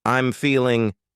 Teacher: I'm feeling cutting off that g